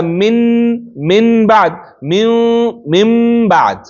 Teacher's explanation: راشي نو هغه کې به اقلاب کیږي نو اقلاب همدای چې د نون ساکن او تنوین आवाज به په میم باندې بدلیږي